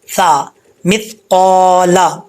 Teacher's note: اوپر والے دانتوں کا جو نچلا حصہ ہے وہاں پر اگر اپنی زبان کی نوک لگائیں گے فرنٹ والا حصہ تو یہ سا پڑا جائے گا بغیر سیٹی کے